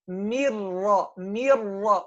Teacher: you make the first ra light and the second heavy